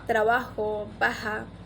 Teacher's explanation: la J que pronuncian suavemente como una H aspirada